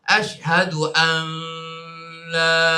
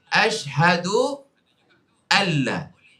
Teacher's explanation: Buang nun tu. Ada dalam tulisan, tidak ada dalam sebutan. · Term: idgham